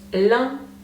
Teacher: that's one of the more difficult sounds we have in French because it's a nasal sound so try to send it a little bit up your nose